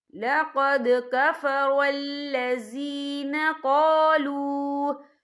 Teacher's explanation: واو ساکن ہے، واو ساکن سے پہلے پیش ہے، اور اس پہ چھوٹی سی مد بھی ہے، تو ہم یہاں 3 یا 4 حرکت کے برابر کھینچ کے پڑھیں گے۔ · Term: واو مدہ